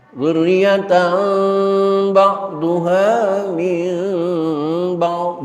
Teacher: Tanwin ketemu ba, sebagaimana nun mati ketemu ba, iklab. Namun cara membacanya ya, jangan menekankan 100% kepada huruf mim, tapi ada ikhfa'nya. Dzurriyyatan ba'duha min ba'd, bukan dzurriyyatan ba'duha min, bukan.